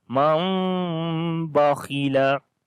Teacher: So we make iqlab here as we convert this noon into meme, which you can see here is a little meme. So this meme we read basically then with the soft sound by closing our lips. So we say man bakhila, and kha we read in heavy sound.